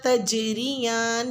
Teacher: لفظ تجریان میں جیم ساکن پہ قلقلہ ہوگا، یعنی تجریان نہیں کرنا، تجریان، جیم کی آواز کو ابھار کے پڑھنا ہے، آواز ٹکرا کے واپس آئے